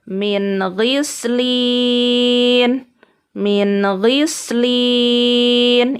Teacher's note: Nun sukun yang bertanda merah di depannya huruf ghin. Dibaca izhar atau jelas.